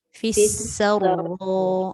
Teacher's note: Sin tu nipis lah, ra tebal.